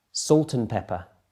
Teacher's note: can you hear how the and has been squashed into a n Sound